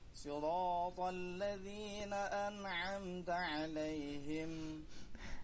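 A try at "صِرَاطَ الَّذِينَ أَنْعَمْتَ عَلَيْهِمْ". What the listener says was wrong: An'amta 'alaihim. Gitu dia. Ya. Jadi jangan disambung-sambung gitu, Pak. An'amta 'alaihim. Jadi santai aja, pelan-pelan aja. Siratal ladzina an'amta 'alaihim. Jadi pelan-pelan saja, jangan an'amta 'alaihim, tapi an'amta 'alaihim.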